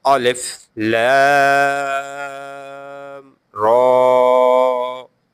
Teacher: I read the Ra up to 2 seconds long and Lam up to 3 seconds.